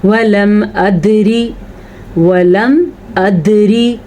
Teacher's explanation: दाल के ऊपर साकिन आने की वजह से यहाँ पे कलकला हो रहा है